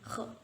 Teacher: Atas lidah bertemu dengan langit-langit berdaging ya di belakang sini